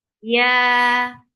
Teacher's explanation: When you're saying yeah, your tongue is lifting up towards your palate, but it's not touching, and the muscles of your tongue are very soft. That is making yeah very soft letter.